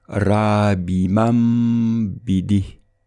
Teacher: le noun avec soukoun sera remplacé par un mim avec un soukoun, et il sera prononcé avec un nasillement de 2 temps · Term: substitution, al-iqlab